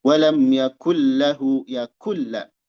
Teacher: Bigoiri gunnah. Tanpa dengung. Jangan ditahan. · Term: idgham bi ghairi gunnah